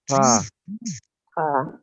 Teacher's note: igualito que la J pronuncian, pero raspando